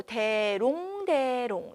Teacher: 당연히 원순 몸이니까 동그랗게 입술 모양이 오므 오므려지게 되고 롱을 발음할 때는 대를 발음할 때에 비해서 당연히 동그랗게 오므려지게 된다